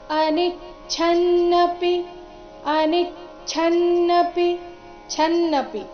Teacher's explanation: ಛ ಮಹಾಪ್ರಾಣ ರಸ್ವ ಬರಬೇಕು